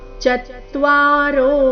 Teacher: ಚತ್ವಾರೋ ಚ ಮೇಲೆ ಆಘಾತ ರೋ ದೀರ್ಘ